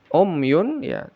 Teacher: Ya, umyun ini mim bertemu ya, izhar syafawi, dibaca jelas mim sukunnya, jangan ada gunnah